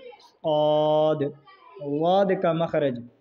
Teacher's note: ज़ुबान की नोक को ऊपर के चार दांत और नीचे के चार दांतों के किनारे पर लगाने से क़ाद अदा होते हैं